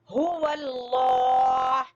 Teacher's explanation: پھر ہا کو جس طرح میں نے بتایا اقصی حلق سے اس کی آواز نکلے گی, گلے کے آخری حصے سے